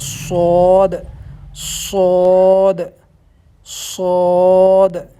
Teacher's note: آواز تھوڑا موٹا کر کے ہونٹوں کو تھوڑا گول کر کے نکالنی ہے